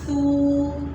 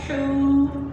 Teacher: واو ساکن سے پہلے جب بھی دمہ آئے گا تو اس کو ہم 1 الف کے برابر لمبا کر کے پڑھیں گے